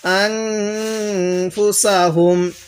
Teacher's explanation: এই নুন সাকিনের মধ্যে আমরা গুন্নাহ করবো কারণ নুন সাকিনের পরে ফা টি হলো ইকফার হরফ তাহলে আন ফা পেশ ফু আনফু সিন জবর সা হা মিম